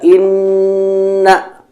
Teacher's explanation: Ketika kita mendapatkan hukum inna, maka nun tersebut dibaca 2 harokat karena terdapat tasydid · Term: wajibul gunnah